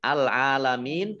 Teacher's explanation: Ain fathah berdiri mat tobi'i, panjang 2 harokat.